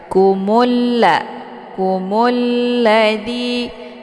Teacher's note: mimnya dimasukkan ke dalam huruf la dengan cara ditekan dan untuk if lamnya tidak lagi dibaca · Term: alif lam asyamsiah